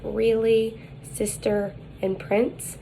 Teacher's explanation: the height is high the advancement is the front the lips are unrounded and it is laxed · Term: small capital l, small capital L